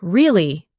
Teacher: when you ask a question like, Really? your voice goes up slightly at the end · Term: rising tone